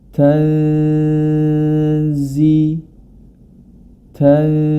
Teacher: huruf nun sukun pada kata tanzilu yang kemudian bertemu dengan huruf za maka hukum bacaannya adalah ikhfa atau disamarkan